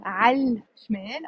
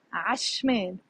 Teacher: Notice I'm not saying عالشمال. I'm saying عشمال.